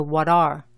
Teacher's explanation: Para decir qué son, dices what are, que se pronuncia what are. Tienes la W inglesa más la A española con un poco de la U antes. La T en este caso suena más como la T española que la T inglesa.